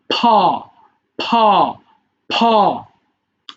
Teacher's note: যখন ফি এর উচ্চারণ করতে হয় দুই ঠোঁট একসাথে করে উচ্চারণ করতে হয়।